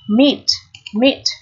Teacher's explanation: e ở đây được phát âm là âm i dài y dài ký hiệu sẽ là i một La Mã và